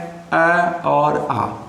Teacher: अ और आ दो ऐसे स्वर हैं जिनका उच्चारण करते समय जो हमारी ध्वनि होती है वह निकलती है कंठ से